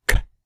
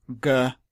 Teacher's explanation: the sound k is unvoiced, whereas g is voiced. An interesting way to tell the difference is if you block your ears and make a k sound and then a g, you'll hear the difference as the vocal cords resonate up through the jawbone.